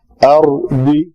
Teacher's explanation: خلیفہ داد بھی موٹا ہے، خا بھی موٹا ہے